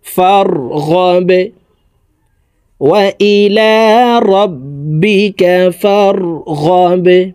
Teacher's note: বা কলকলার হরফ নিচের দিকে ধাবিত করে ধাক্কা দিয়ে এই বাকে সাকিন করে ফেলবো।